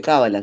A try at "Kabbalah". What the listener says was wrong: es Kabbalah. Es una palabra aguda, ¿sí? En hebreo es aguda, es acentuada en la última sílaba.